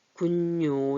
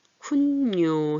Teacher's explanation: 이 발음할 때 군요 이렇게 하는 것보다 쿤요 해서 니은이 하나 더 들어가서 발음이 나는 거예요. 니은이 첨가된 거예요.